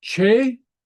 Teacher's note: The T followed by a slender vowel takes on more of a CH sound. It's a soft T.